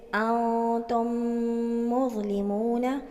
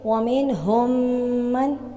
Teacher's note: ادغام شفوی۔ میم ساکن کے بعد دوسری میم آ جائے تو غنّے کے ساتھ مشدد ادا کریں گے